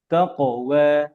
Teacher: وتزودوا فإن خير الزاد التقوى واتقون يا أولي الألباب এখানে খেয়াল রাখতে হবে যেন যেন এই যে শেষে পরে যেহেতু ওয়াও আছে, আর ওয়াও পড়ার সময় ঠোঁট গোল করতে হয়, তো তো এখন যেন তাকুওয়া না হয়, তাকওয়া, বুঝতে পারছেন?